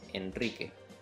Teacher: Al decir, por ejemplo, el nombre Enrique, después de la N, Enrique, estoy usando el sonido de la R vibrante, múltiple o R doble